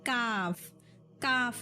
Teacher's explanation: जबान की जड़ और ऊपर की छोटी जबान के किनारा, ठीक है, किनारा मिलने से काफ, काफ निकलता है